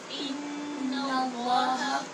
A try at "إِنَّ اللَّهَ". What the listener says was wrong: نون کو پر نہیں کرنا، لام کو پر کرنا ہے. ان اللہ، نوزا نہیں پڑھیں، نون باریک پڑھیں.